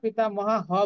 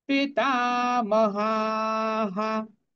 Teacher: পিতা, তাটা দীর্ঘ হবে, হাটা দীর্ঘ হবে, আর যেহেতু হয়ের সাথে আকার আছে, এই জন্য যে বিসর্গটা আছে এটাও হা হয়ে যাবে